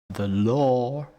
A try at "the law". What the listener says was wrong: You see yeah, you gotta be careful because you're saying like lore, lore. lore. Yeah, so another way to get that down more is if you say the L sound first and then add law. Law. Law.